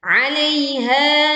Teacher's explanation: Ha dibaca 2 harokat panjangnya.